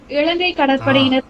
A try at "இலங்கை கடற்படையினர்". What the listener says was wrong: அப்படி இலங்கைங்கிறீங்க நீங்க, அங்க சின்ன ல இருக்கு, புரியுதுங்களா? இலங்கை ல நுனி நாக்கு மேல் பல்வரிசையின் உட்புறத்தை தொட வேண்டும். இலங்கை கடற்படையினர் நீங்க எப்படி சொன்னீங்கன்னா இலங்கை, நீங்க அதாவது இதுக்கு வரும் இல்லையா, பள்ளிக்கு வருது இல்லையா, அந்த எல்லாம் நீங்க போட்டீங்க.